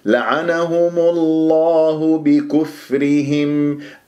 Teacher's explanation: ميم مضمومة جاءت قبل اسم الجلال الله، تفخم اللام من اسم الجلال الله